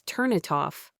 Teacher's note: The most common is linking, especially a consonant sound at the end of a word linking to a vowel sound at the beginning of the next